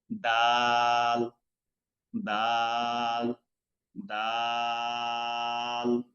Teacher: জিহ্বার আগা উপরের দুই দাঁতের গোড়া থেকে উচ্চারণ হবে দাল